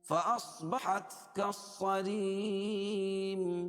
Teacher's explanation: صاد کو موٹا پڑھیں گے کیونکہ حروف مستعلیہ میں سے ہے. فأصبحت كالصريم، یہ لام جو نہیں پڑھی جائے گی، کاف کو صاد میں ملائیں گے.